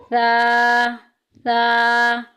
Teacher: ज़बान का सिरा और ऊपर वाले दांतों के जो ऊपर वाले दोनों दांत है ना, सामने वाले, उनके अंदरूनी किनारे से सा अदा होता है